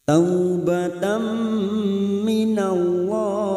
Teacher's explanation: fathah tanwin bertemu mim idgham bi gunnah masuk ke huruf mim dan mendengung selama 2 atau 3 harokat. Taubatan minallah minallah lam jalalah yang sebelumnya fathah kita baca tafkim.